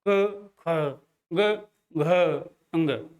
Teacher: का को बोलने पर व्यंजन ध्वनियों में जो हवा की मात्रा है वो कम निकल रही है, ख बढ़ जा रही है, ग कम, घ अंग कम। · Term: महाप्राण